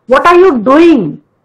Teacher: I have stressed the word doing.